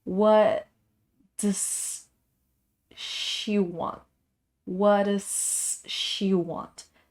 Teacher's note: here we have a word that ends up with s and a word that begins with s in sequence so we're not saying the s the s sound twice we are making it just once · some of the the sounds are being mixed together yeah like the t and the d sound they almost sound like one single sound